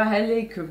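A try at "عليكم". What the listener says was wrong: Alaykum. Alors, il n'y a pas de H.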